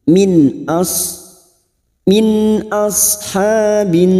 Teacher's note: sekarang kita wasal di sini fatakuna Min nun sukun bertemu Hamzah Idhar halq nun sukun dibaca jelas tanpa mendengung